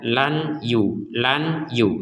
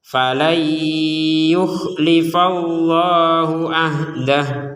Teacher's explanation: nun sukun bertemu ya maka kita masukkan Nun ini kepada huruf ya · karena di awal ayat, di awal huruf pertama ini adalah huruf ya, maka nun sukun dimasukkan ke huruf ya